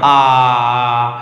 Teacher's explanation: কিন্তু জীবের যদি কথা বলি জীবটা কোথায় থাকছে দেখো আ নরমাল উচ্চারণ করা আ দেখো জীব না উপরে না নিচে না সামনে না পেছনে মাঝখানে থাকছে মিডিলে থাকছে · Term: কেন্দ্রীয় বা মধ্যস্থ